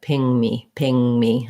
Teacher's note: I just moved from the lifted tongue in the back to the M.